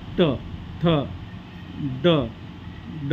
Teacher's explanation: दाताच्या वरच्या जबड्यामध्ये जेव्हा जीभ लागते तेव्हा हे अक्षर म्हणजे उच्चारले जातात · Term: मूर्धन्य वर्ण